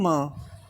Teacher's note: अनुनासिक होता है म। देखो म जो है आप बिना नाक के नहीं बोल सकते